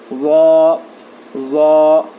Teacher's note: ज़ा का मखरज है जुबान की नोक को सामने के दो दांतों के किनारों को लगाने से ज़ा अदा होता है